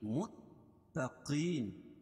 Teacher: متقین قاف کو موٹا پڑھیں گے